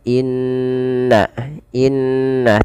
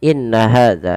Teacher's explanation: tinggi adalah ketika Nun dan mim berharakat tasdid maka di sini ketika Nun ada atau mim berharakat tasdid maka ditahan Sur ya sepanjang dua harakat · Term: gunah